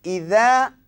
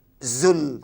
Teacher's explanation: Tengok, idza dengan zul lain bunyinya. Sebab kalau idza dia tepi hujung lidah. Tetapi kalau zai zulzilati dia di hujung lidah.